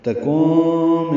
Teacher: تکون میں تا کو جلدی ادا کرنا ہے، نون ساکن کے بعد کاف آنے کی وجہ سے اخفا ہے